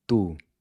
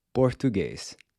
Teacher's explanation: The Portuguese T, on the other hand, is pronounced with the tip of the tongue pressed against the back side of the front teeth, and you quickly snap your tongue down.